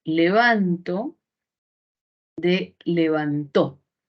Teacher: se da en la persona gramatical Entonces si existe una variación Y esa variación se ha dado solamente con el movimiento del acento con el movimiento de la sílaba tónica